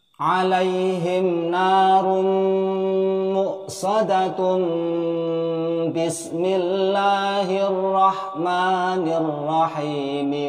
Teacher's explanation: maka ketika bertemu ba-nya bismillah akan menjadi hukum bacaan iqlab, sehingga dengung 3 ketukan.